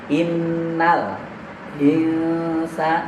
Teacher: nun mati bertemu sin itu dengung ya, ikhfa. Ini ditahan karena ada tasdid huruf nunnya. · Innal alif lamnya jangan dipantulkan, karena alif lam bukan huruf qalqalah. Jangan innal jangan, tapi langsung innal insa, nun mati bertemu sin itu dengung ya, ikhfa.